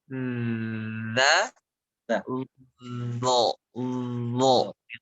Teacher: Khususnya yang sering terjadi adalah pertama huruf dzal dan huruf zo. Secara makhraj itu secara tempat keluarnya, dzal dengan zo itu sama. Ujung lidahnya dia digigit.